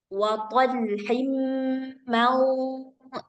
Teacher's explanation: Suara daripada nun sukun itu udah siap-siap ke makhraj dod, maka suara nunnya jadi tebal, ghunahnya jadi tebal. Jadi, enggak boleh dibaca man tipis.